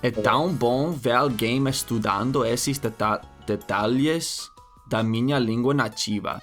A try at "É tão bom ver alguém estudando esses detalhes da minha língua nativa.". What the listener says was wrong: That was good. Yeah, it looks like you got tripped up on the detalles.